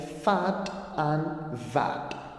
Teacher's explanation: Here we have upper teeth and here we have lower lip. So with the help of upper teeth and lower lip, we produce sound like fat and vat